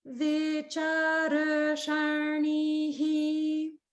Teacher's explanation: notice how my voice only went to the upper note on cha and then immediately came back to middle for rusharnihi